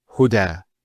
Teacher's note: There's the elongation as well, because the fatha followed by an alif. If this wasn't there, it will be huda.